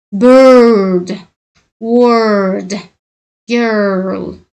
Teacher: lablaringizni ozroq oldinga chiqarib, tillaringizni tanglayga ko'targan holda r ni cho'ziqroq o'qishingiz kerak bo'ladi. Ko'pincha o'zi o'sha so'zning ichidagi r ni, ya'ni yopiq bo'g'inda tursa, oldidagi unlini qanaqadir o'zgartiribroq deb tovush berishiga sabab bo'ladi.